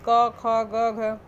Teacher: जैसे क वर्ग को हम लोग कंठ से बोलते हैं, जैसे बोल के भी देख सकते हैं कि क ख ग घ, कहाँ से ये आवाज़ निकल रहा है, कंठ से, हमारे गले से निकल रहा है, तो इसे कहते हैं, ये कंठ वर्ड हैं ये पांचों।